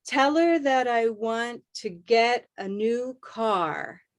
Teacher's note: All of those want, get, new car are your main beats.